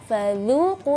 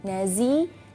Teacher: Perhatikan fadzuqu lidahnya keluar, tapi ketika melafalkan huruf za lidahnya di dalam.